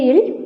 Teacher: அடுத்து பெரிய இல், இது மேல்வாய் நாக்கின் ஓரங்கள் தடித்து தடவுவதால் பிறக்கிறது